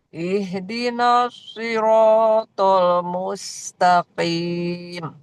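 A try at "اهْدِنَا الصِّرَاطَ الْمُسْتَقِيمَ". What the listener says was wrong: Ihdinas, jangan sampai tebal naknya tipis. Ihdinas siratal mustaqim.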